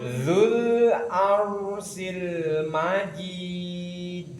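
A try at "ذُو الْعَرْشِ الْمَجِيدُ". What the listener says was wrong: Shinnya jadi arsyil lagi.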